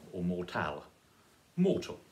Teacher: mortal is stress on the first